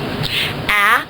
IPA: æ